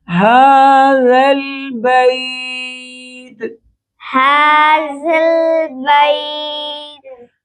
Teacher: زال کو نرم کریں گے۔ زال کے پڑھنے کا طریقہ، زبان کی نوک کو اوپر کے دانتوں سے لگائیں گے۔